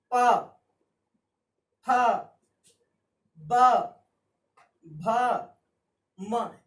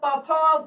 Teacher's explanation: ओष्ठ्य ध्वनियां कहा गया जो ध्वनियां दोनों ओठों के स्पर्श से उत्पन्न होता है